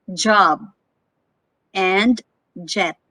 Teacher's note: ja is a voiced consonant again voiced vibration of the vocal chords